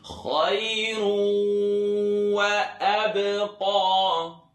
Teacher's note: And the sound is traveling in my nose when I pronounce this wow.